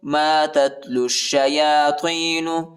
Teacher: تا کو تا کے ساتھ ملائیں گے اور لام کو شین کے ساتھ ملائیں گے